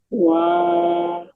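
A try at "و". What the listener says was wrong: not Va. Wow doesn't have a fatha. How can you read Va? Yes, Vav has sukoon and sukoon doesn't have any sign. It just need to connect with the previous letter, that's it. And because it is Vav Madda, so what we do, we just stretch the previous letter for 2 seconds.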